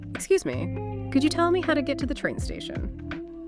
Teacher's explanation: Polite, maybe slightly hesitant. Clear rising intonation for the question.